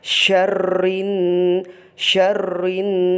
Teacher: ketika melafalkan syarrin itu harus ada dengungnya